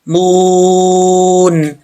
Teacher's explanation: یہاں پہ واو مدہ ہے تو ایک الف کی مقدار اس کو لمبا کریں گے